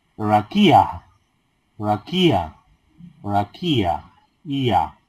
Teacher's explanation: La ayin al final, la ayin es muda, así que no la pronunciamos, pero tengo que pronunciar como si fuera un diptongo, ia.